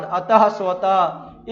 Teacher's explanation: अनुसार की तरह विसर्ग भी स्वर के बाद आता है। इनका उच्चारण ह की तरह होता है